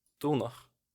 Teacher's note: Dulnach, which is the past autonomous here, is notably not lenited. And in general, the autonomous forms tend to resist lenition to some extent, so they'll be unlenited when you might expect some lenition.